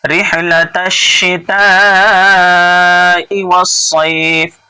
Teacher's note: الف لام کے بعد حروف شمسی کے کوئی حرف آتا ہے تو دیکھیے یہاں الف لام کے بعد شین ہے، یہ شین حروف شمسی میں سے ہے اس لیے الف اور لام کو نہیں پڑھ رہے ہیں، ڈائریکٹ شین کو پڑھ رہے ہیں